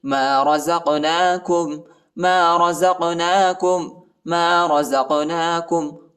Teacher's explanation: قاف کو جھٹکا دینا ہے، حروف یا قلقلہ کا حرف ہے۔